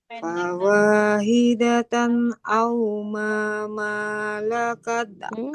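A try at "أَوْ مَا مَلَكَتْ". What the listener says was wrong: Mimnya jangan dipanjangkan. Yang panjang mim yang pertamanya aja.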